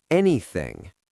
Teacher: The th in anything is similar to the th in thank you. That soft th sound where your tongue is slightly between your teeth.